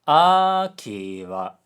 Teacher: Aki wa, high low low. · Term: pitch accent